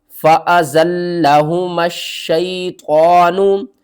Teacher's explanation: لام کے اوپر تشدید ہے، 2 بار پڑھیں گے، سختی کے ساتھ پڑھیں گے۔ میم کو ہم نے شین سے ملانا ہے، درمیان میں یہ الف اور یہ لام، ان تینوں کو آپ نے چھوڑ دینا ہے۔